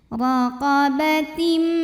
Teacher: Tim ada idgham bi gunnah karena ada tanwin kasroh yang menghadapi huruf mim. Maka tanwinnya ini dimasukkan, dileburkan ke mim, raqabatim, disertai bunyi dengungan.